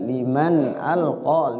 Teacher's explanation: nun mati ketemu alif, izhar dibaca jelas nunnya, izhar. Huruf izhar ada berapa?